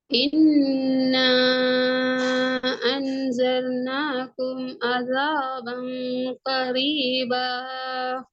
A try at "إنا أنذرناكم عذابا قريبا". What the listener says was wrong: அன்தர்னாகும் ஆ அல்ல அ.